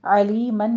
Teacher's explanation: علیمن میں عین وسط حلق سے ادا کرتے ہوئے آگے یا مدہ ہے اور تنوین کا قاعدہ اظہار حلقی کریں گے، حکیمن میں بھی